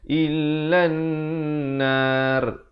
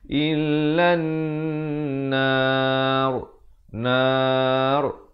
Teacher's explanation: Kalau waqaf, ra itu jadi tebal. Tapi sebelum itu, di sini kena dengung dulu 2 harakat.